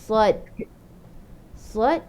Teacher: dia akan angkat pangkal lidah sebab dia huruf itba', dan dia akan angkat tepi lidah, pangkal lidah isti'la, tepi lidah itba', sad, kan?